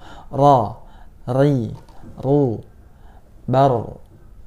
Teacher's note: Lalu sifat yang keenam atau sifat yang terakhir yaitu adalah takrir. Nah, takrir ini adalah ciri khas dari huruf ro, yaitu bergetar ya. Bergetar lidahnya, bergetar suaranya ketika kita mengucapkan huruf ro.